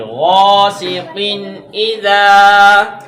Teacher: جب بھی حمزہ آ جائے گا تنوین کے بعد تو پھر تنوین پہ غنہ نہیں کریں گے